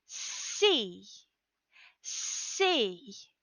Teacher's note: place your hand on your throat and say see see and you'll feel no vibration for the s sound · of breath to help you get that hissing s sound strong remember that s is voiceless pronounced without the voice by pushing the air between your teeth and through open and rounded lips